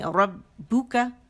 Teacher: با کا مخرج فلیٹ لپ سے ہے اور دونوں ہونٹ کے گیلے سے آپس میں سختی سے ملیں گے.